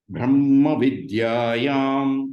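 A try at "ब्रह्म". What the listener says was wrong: You are saying bra. Are you not understanding? See, we are saying bra. I'm saying bra. Don't give a H sound. It is not a Mahaprana. It is not BHRA. It is only BRA. Bra. Brahma.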